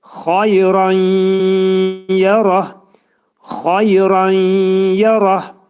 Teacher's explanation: Xayran yerətdə burada ra hərfi dolu oxunacaq. Nun burada tənvindəki nunun biri yə hərfinə dəyərək nə olur? İdğam mə'al gunnə olur. Yəni nun hərfi yə hərfinə çevriləcək.